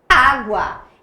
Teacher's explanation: o G e o U aqui não constituem um dígrafo, porque você fala o U, é água.